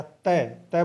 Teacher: तो आप बोल के देख लीजिए प या तय बोल के देखोगे तो जीभ है वो दांतों को स्पर्श करती है